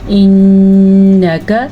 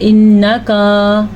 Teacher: نون کو ہم نے لمبا نہیں کرنا، صرف غنے پہ ہم نے ٹھہرنا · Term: غنہ